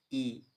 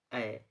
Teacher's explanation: अग्र स्वर उच्चारण में जीभ के अग्र भाग का प्रयोग होता है